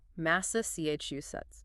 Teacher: Long word stress on the third syllable.